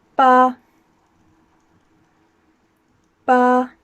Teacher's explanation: Number 8 is pronounced Ba, like the sound that a sheep makes, and again it's first tone so it's flat